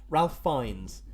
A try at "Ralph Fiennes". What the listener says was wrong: Oh no, Rafe. There's been interviews where he's been like, "It's Rafe." It's spelt Ralph, but he says it's Rafe.